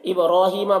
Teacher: با میں قلقلہ ہوگا، با حروف قلقلہ میں سے ہے